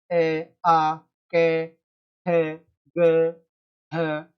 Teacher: पहला जो सबसे पहले अपन देख रहे हैं आपका आ, क वर्ग और आपका विसर्ग किससे उच्चारित होता है, कंठ कोमल तालु से होता है, और इनका उच्चारण स्थान जो है वो आपका कंठ है।